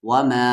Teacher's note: مد کے سمبل کے بعد حمزہ آ رہا ہے، 3 سے 4 الف کے برابر کھینچیں گے